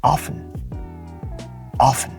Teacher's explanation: you don't even hear the T often the T comes silent · the silent T, in a sense, is similar to glottal stop, where the T itself is so silent that you can barely hear it. You can barely hear it in the words.